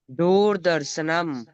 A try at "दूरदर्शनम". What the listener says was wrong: दूरदर्शनम, र पूरा है।